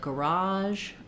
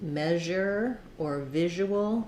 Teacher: It's like the SH sound, but our voice is on. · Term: zh sound